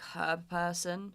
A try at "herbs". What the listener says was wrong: Silent. The H is silent. Herbs.